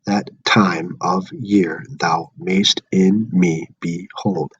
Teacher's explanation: unstressed stressed unstressed stressed unstressed stressed unstressed stressed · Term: pentameter, iambic pentameter